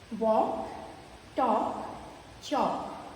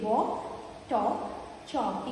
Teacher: We don't get the L sound of L in these words. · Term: silent L